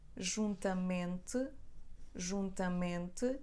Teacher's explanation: When letter M comes between two vowels, it has the sound M. So it's gonna be bilabial again. So M comes after O, it comes after O again here, it comes after E, it comes after A, it comes after E, and it's always M. · I actually pronounce M as bilabial.